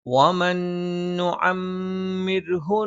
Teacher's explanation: സുക്കൂനുള്ള നൂനിന് ശേഷം നൂന് വന്നു, ഇദ്ഗാമും ബിഗുന്നയാണ്. നൂനിനെ ശേഷമുള്ള നൂനിലേക്ക് നമ്മൾ ചേർത്തോതും മണിച്ചുച്ചരിക്കുകയും വേണം. വമൻ നുഅമ്മിർഹു, മീമിന് ശബ്ദുണ്ട്, മണിക്കണം.